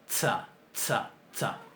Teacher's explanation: si uno le pone una T adelante, se logra que el sonido S sea más duro, ¿verdad? Sea en alguna medida oclusivo. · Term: TS